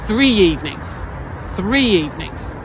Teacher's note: the y separates the word for the listener, and for you, the speaker, it connects them